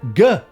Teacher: sound is located at our lips which makes it labial whereas the G sound is located at our palette the back part of the roof of our mouth which makes it dorsal